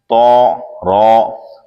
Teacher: تو حرف مستعلیہ بھی ہے اور تو زبان کی نوک اوپر کے دانتوں کی جڑ سے ادا ہوتا ہے، رو زبان کا کنارہ دانتوں کی جڑ کی تالو کی جانب سے ادا ہوتا ہے، یا پھر زبان کی نوک اور مقابل کے تالو سے ادا ہوتا ہے۔